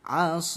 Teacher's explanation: Kalau waqaf maka kita sukunkan huruf terakhir menjadi asoi. Sodnya kita panjangkan 6 harokat dan sukunkan huruf terakhir, jadinya bacaan mat adid disukun.